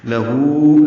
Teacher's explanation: لہو، لام کو جلدی پڑھنا ہے، ہو الٹا پیش ہے، یہ بھی 2 حرکات لمبا کرنا ہے، ہونٹ گول کرنے ہیں، آگے کی جانب لانے ہیں